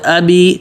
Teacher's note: ابی، حمزہ پتلا، بی بالکل واضح